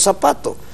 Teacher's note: nosotros las zetas españolas las convertimos en eses